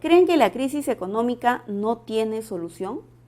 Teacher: En la oración presenta tono final ascendente, porque es una pregunta interrogativa directa